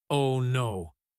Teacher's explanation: The O in oh no should be long and low.